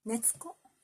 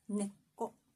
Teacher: But the Japanese people usually say neko, 2.5 moras. Because the tiny tsu has just the consonants, just the length of the consonant